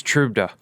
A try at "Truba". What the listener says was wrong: Truba. Yeah. I don't think there's even a D.